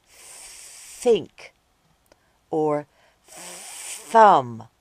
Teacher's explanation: do it quietly like at the beginning of think or thumb this sound is called the unvoiced th sound